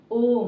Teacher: प्लुत स्वर प्लुत स्वर हम देखते हैं बच्चों आप लोगों ने देखा होगा कहीं ऐसा लिखा होगा ओम तो ओम का उच्चारण जो है अधिक समय लगता है ओम के उच्चारण में जब हम ओम का उच्चारण करते हैं आप लोग करके देखिए ओम तो इसमें तीन मात्रा का समय लगता है इसलिए इसे कहा गया है प्लुत स्वर